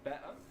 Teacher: he's dropping the T in better, so it's better.